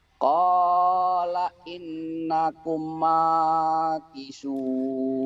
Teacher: ini mim mati ketemu mim ada ditahan. Idgham mimi ya.